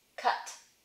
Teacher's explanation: I would tend to put a no audible release on it because I tend to say cut instead of cut.